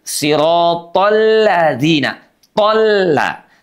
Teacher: Tidak sirotol ladzina, ya, tapi sirotol ladzina, ditasydidkan, dileburkan, diidghamkan, karena dia hukumnya adalah idgham syamsiyah. Sirotolla, dan la-nya jangan sampai menebal.